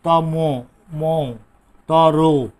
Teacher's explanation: ওটা উচ্চারিত হচ্ছে, অটা হয়ে যাচ্ছে তোমার ও এর মতো, এটি হচ্ছে সংবৃত।